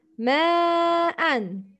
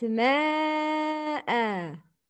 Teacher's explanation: Tanween with fatha change to alif mad when you stop. You should make long sound with two beats. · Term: مد العوض